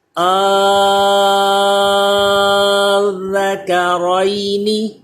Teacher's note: الذکرین، ذال پہ سیٹی پیدا نہ ہو، زبان اوپر کے دانتوں سے چپکا کے پڑھیں۔ الذکرین، ذال باریک بھی پڑھا جائے، کاف بھی باریک پڑھا جائے، را پر ہو